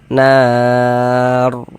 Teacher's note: maka huruf ro sukunnya kita baca tafkhim, kita baca tebal, sehingga pangkal lisan kita naik terangkat ke atas ketika kita mengucapkannya.